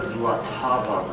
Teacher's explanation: it's got no vowels in the first syllable, so it's kind of hard to remember.